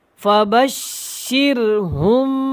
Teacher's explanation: شین کو سختی کے ساتھ ادا کریں اور را کو باریک پڑھیں گے، را ساکن اس سے پہلے زیر ہے تو اس کو ہم نے باریک پڑھنا ہے۔